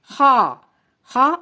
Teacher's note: خا ادنا حلق، حلق کا منہ کی طرف والا حصہ، یہاں سے خا ادا ہوتا ہے۔ خا کو ادا کرتے وقت ہونٹوں کو گول نہیں کرنا بلکہ منہ کو سیدھا کھولنا ہے۔